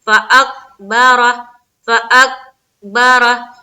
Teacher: قاف کی مخرج کے اوپر ہماری آواز اٹک جا رہی ہے اور پھر با سے ہم اٹھا رہے ہیں. فاکبرہ ہے نا، تو یہ غلط ہے.